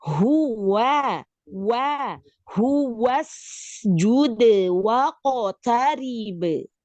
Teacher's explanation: Nah, jangan tu ti, tapi tu ti, ya. Tu hu, hu-nya keluarkan dari tenggorokan bawah